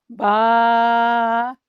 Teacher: یہ ہونٹوں کے تر حصہ سے ادا ہوتا ہے۔